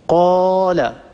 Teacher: لاحظوا مثلا قال، لاحظوا هذا ألف، لا شيء يقطع صوت الألف، إنما هو صوت هوائي يخرج من الجوف ويتلاشى الصوت